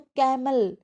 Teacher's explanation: कैमल के कै को स्ट्रेस दिया है